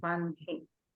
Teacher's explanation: హకారం తర్వాత అనునాసికం వస్తే గనక అనునాసికం పలికి తర్వాత హకారం పలకాలి